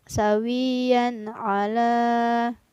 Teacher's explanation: ada tanwin yang bertemu dengan huruf Ain maka tanwinnya harus dibaca jelas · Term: izhar